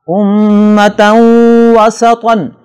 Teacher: امتن وسطن، نون تنوین کے بعد ینمو میں سے واو آ رہا ہے، لہٰذا نون تنوین میں نون ساکن کی جو آواز پیدا ہوتی ہے اسے واو میں مکس کر کے پڑھیں گے اور غنہ بھی ہوگا، جسے ادغام کہتے ہیں